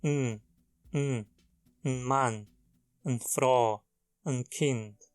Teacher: muitas vezes é tão reduzido que se consegue escutar apenas o som do n